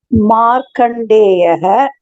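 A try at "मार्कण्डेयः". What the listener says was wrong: Very good, very good, very good. நல்லா வாசிங்கம்மா, first class.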